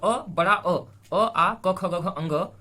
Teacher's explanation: इन सब का उच्चारण स्थान कहां पे होता है, कंठ से इनका उच्चारण होता है